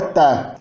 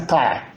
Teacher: A enfática é uma consoante alveolar uvularizada, isso que é marcado por esse ganchinho depois do símbolo, significa que tem articulação velada dela normal, mas também tem uma articulação lá no velo ou na úvula que faz uma impressão gutural.